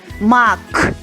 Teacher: останній звук к твердий приголосний позначимо синім квадратиком у нас вийшла кольорова схема слова мак давайте